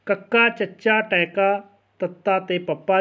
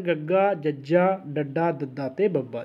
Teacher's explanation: ਜਿਹੜੇ ਵਿਅੰਜਨਾਂ ਦੇ ਉਚਾਰਨ ਵਿੱਚ ਥੋੜ੍ਹੀ ਮਾਤਰਾ ਵਿੱਚ ਸਾਹ ਜਿਹੜਾ ਬਾਹਰ ਨਿਕਲੇ ਉਹਨੂੰ ਕਹਿੰਦੇ ਨੇ ਜੀ ਅਲਪ ਪ੍ਰਾਣ।